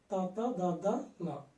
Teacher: వీటిని పలికేటప్పుడు నాలుగు చివరి భాగం దంతాలకు పైన, కింద కాకుండా దంతాల పై భాగంలో దంతాలకు టచ్ అవుతుంది. కాబట్టి వాటిని తాత దాదా నాలను దంత్యములు అంటాం.